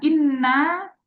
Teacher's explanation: menetapkan kadarnya mad ini dengan dua harakat